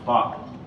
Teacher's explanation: You shouldn't feel a puff of air when you say that P sound.